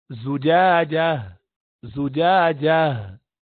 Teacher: زجاجہ، یہ جو اقصل حلق سے جو بتایا تھا، نیچے حلق سے جو ہا نکلتا ہے اس کو ادا کرنا ہے یہاں پر